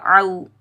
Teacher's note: عین کو حلق کے درمیان سے ادا کریں گے